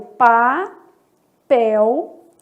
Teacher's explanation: alguns autores admitem a letra L com som de semivogal. Vai ter som de U · E aqui eu tô vendo um ditongo fonético formado aí pela letra L.